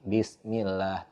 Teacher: diawali sebelum lafaz Allah itu ada kasrah Bismi baru lafadz Allah maka hukumnya adalah tarqiq bismillah tipis dibacanya